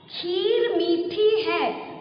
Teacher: पूरे में जोर आ रहा है। खीर में भी, मी में भी, ठी में भी। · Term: बड़ी ई की मात्रा